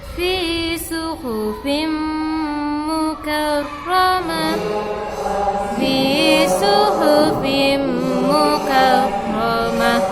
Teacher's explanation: tanwin bertemu dengan mim, maka hukumnya idgham bi gunnah, harus didengungkan.